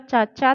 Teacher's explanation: तालव्य है लेकिन महाप्राण नहीं है, अल्प प्राण है